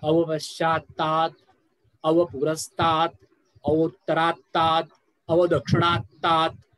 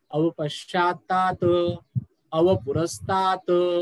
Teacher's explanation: अवपश्चातात शेवटचा त हलंत आहे, त्याचा अर्ध उच्चारण आहे.